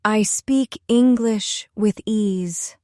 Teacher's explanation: Notice the stress on ease.